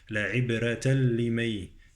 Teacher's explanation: عبرة تنوين يدغم في اللام